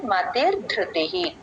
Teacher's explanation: last లో ధృతిహి విసర్గ పూర్తిగా చెప్పాలి